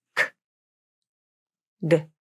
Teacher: For the K and G consonants, the airflow is stopped where the back of the tongue touches the soft palate, or the back of the mouth. The air is released as you bring the tongue down. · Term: stop consonants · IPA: /k/